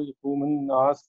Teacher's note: یقوم الناس اکٹھا پڑھا جائے گا حمزۃ الوصل کے ساتھ ، نون کے بعد الف مد آ رہا ہے، دو حرکت